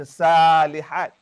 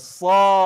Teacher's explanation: Kita tak baca salihat. Kita baca sa, bunyi o. Itu dia panggil bunyi meninggi, isti'la. Dia bukan o.